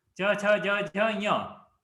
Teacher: And this talavya, so this basically your middle of the tongue should touch up and the nose should be used